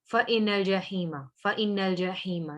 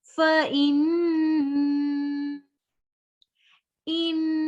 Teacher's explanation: एक अलिफ के इक्वल नाक में आवाज को ठहराना होता है। तब हम यहाँ पे करेंगे गुन्ना।